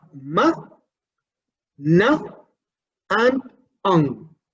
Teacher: The nasal, as manner of articulation, we have ma, na, and ang. We have three consonants here as nasals